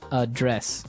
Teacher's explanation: but you pronounce it differently so the verb address has the the stress on the second syllable